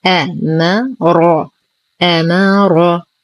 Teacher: نرقق الهمزة والميم ونخلصها من تفخيم الراء